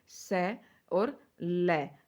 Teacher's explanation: स और ल तो यहां दंते से इनका उच्चारण होता है